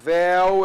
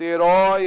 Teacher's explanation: O ditongo aberto, céu é o E aberto, véu é o E aberto, herói é o O aberto